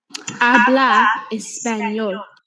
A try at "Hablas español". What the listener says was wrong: So hablas, there's an end, a S at the end, love. So that kind of sounds like a statement. And then as soon as we add a question mark, it kind of changes in tone to sound like a question.